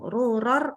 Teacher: Ini ada tanwin ketemu tanwin ketemu ro, maka dia menjadi idgham.